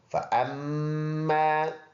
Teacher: حمزہ میم زبر ام، میم الف زبر ما، مشدد میم میں ایک الف کے اندازے سے غنہ یعنی ناک میں آواز لے کے جائیں گے